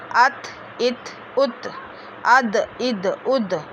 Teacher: ता दाल तो ज़बान की नोक और सामने के ऊपर वाले 2 दांतों की जड़ से अदा होते हैं